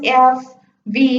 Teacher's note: labiodental, between the upper incisor and lower lip. That is when we pronounce F, V, then it is labiodental.